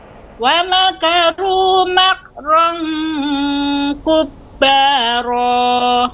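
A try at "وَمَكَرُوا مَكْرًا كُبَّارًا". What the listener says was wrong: Nah, Ibu, ketika Ibu tadi membaca dalam ayat, kafnya kurang. Nah, tapi ketika tadi kita baca hanya satu kata saja, makron sudah bagus. Namun ketika dimasukkan, hilang lagi dia Ibu.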